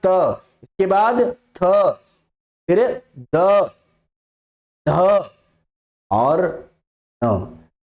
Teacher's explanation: दांतों में आपकी जिव्या लग रही है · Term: दंत्य